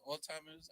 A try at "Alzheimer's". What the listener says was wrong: pronounce the Z, please.